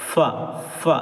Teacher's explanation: ऊपर के जो दो दांत है यानी सना उलिया उनको नीचे वाले होठ के अंदर वाले हिस्से में लगाना है